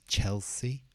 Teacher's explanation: so the stress is on the first part